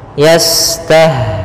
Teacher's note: Kemudian pangkal lidah, istifal pangkal lidahnya di bawah saja. Kemudian dia ada sifat namanya sifat sofir, ya, berdesis seperti burung